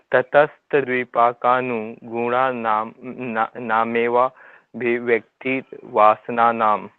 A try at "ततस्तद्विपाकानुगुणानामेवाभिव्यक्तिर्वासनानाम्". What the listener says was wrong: ठीक है जी, नेक्स्ट पे चलते हैं।